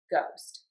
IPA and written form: goʊst (GHOST)